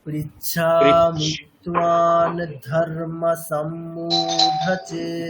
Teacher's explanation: অনুস্বারের পরে কি আছে ধ আছে, তাহলে অনুস্বারটা কেমন হয়ে যাবে, দন্তীয় নয়ের মতো উচ্চারণ হবে